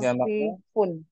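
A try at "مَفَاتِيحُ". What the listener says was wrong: Manafikhu. Mafailu. Tidak boleh tanwin.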